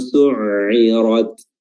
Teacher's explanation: huruf ra dibaca tebal, isti'la, dan terakhir ta sukun rad.